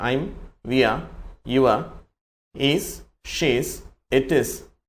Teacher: தாய்மொழி ஆங்கிலமாக கொண்டவர்கள் ஆங்கிலோ இந்தியன்ஸ்ல்லாம் இவங்க வந்து விஆர் என்று சொல்ல மாட்டார் வியா அப்படின்னு சொல்லுவாங்க